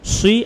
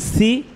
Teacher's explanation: সজ্জের সি বলার সময় মুখটা গোল হবে ঠোঁটগুলো আর সিনজের সি বলার সময় ঠোঁটটা ছড়ায় যাবে